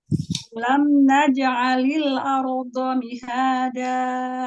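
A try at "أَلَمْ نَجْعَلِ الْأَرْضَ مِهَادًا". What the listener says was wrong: Ya, lam sukunnya jangan terburu-buru. Sempurnakan. Kasih sifat inhirab bainiahnya. Alam naj'alil arda mihada.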